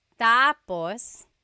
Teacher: So when it's tap tapos when the emphasis is at the end tapos that means finished. When the emphasis is on the first syllable tapos then it means next.